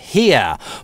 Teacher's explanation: слово here может быть собственно [hɪə], может быть [hiə], от [i] дифтонг начинается, а может быть [hɪː]. Но оно никогда не сливается с he.